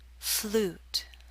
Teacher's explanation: the ooh in Flute is longer